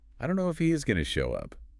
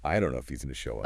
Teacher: And if he is going to reduces to if he's gonna.